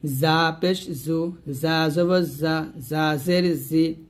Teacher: সামনের নিচের আগা থেকে শীর্ষ পাতলা ভাবে আদায় করতে হবে অর্থাৎ জিহ্বার আগাটা সামনে নিচের দাঁতের মাঝে লাগিয়ে এই জাটা উচ্চারণ করবেন শীর্ষ পাতলা করে